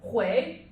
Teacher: It's a second tone, it's a rising tone.